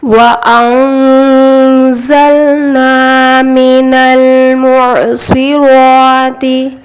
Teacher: اب یہاں دیکھیے نون ساکن آیا، نون ساکن کے بعد حرف اخفا زا ہے، ان نون کی آواز کو ناک میں چھپا کر پڑھیں گے، اخفا کا قاعدہ ہوگا، وَأَنزَل اب یہاں پہ زا سیٹی والی آواز آنی چاہیے